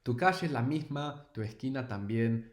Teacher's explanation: this aspirated S, which the singer does, and I do it to a degree as well. Many Spanish speakers from different dialects do this.